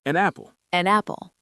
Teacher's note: the final consonant of the first word attaches itself to the beginning of the second word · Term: consonant-vowel linking